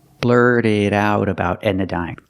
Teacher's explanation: about Edna so the T and blurt is a fast e the T in it is a fast D and the T in about is a fast D